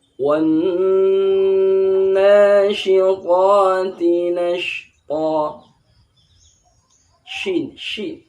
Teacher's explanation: Shin, shin. Shin ini udara ini menyebar dalam mulut yang banyak. Sedikit yang keluar dari mulut.